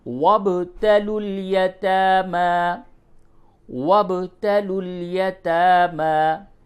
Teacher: یہ با ساکن ہے اس لیے اس پہ قلقلہ کیجئے